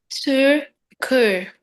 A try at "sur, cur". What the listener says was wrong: Very good. Hey, that went pretty well.